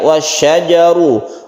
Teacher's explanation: ro-nya ditebalkan karena ro ini berharokat dhamma